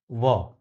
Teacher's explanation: जब व बोलते हैं हम तो ऊपर के दांत नीचे के ओठ को स्पर्श करता है, इसलिए इसका जो व का उच्चारण स्थान होता है वह दांत और ओठ की सहायता से होता है।